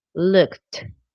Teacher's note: the ed sounds like a t like really strong